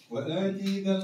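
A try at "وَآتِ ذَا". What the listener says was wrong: لا كيفاش تقف عليها آتي؟ خلوه وحده آتي. هي مش وآتي قالتك تدخل وآتي تمدها كأنك التاء ممدودة والتاء ماهيش ممدودة يعني استقرها هكا وآتي ذا وآتي ذا عاود ترى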